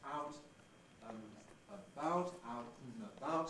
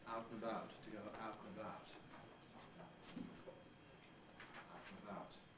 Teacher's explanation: in out and about, and can be reduced just to a non-syllabic N consonant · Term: compression